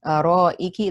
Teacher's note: the alif mud here comes before the hamza. It is mud wajib muttasil, extended for 4 or 5 counts.